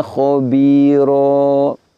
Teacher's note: Tertulis khabiron, namun kita baca khabira. Fathah tanwinnya kita ibdal, kita ganti dengan fathah panjang.